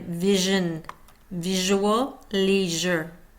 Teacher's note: Sh, voiced. Tongue rolling, so back of tongue between ridge and palate. Continuous flow with friction sound.